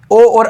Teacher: तो ओ और औ किसमें आते हैं कंठ प्लस ओष्ठ कंठोष् कंठोष्ठी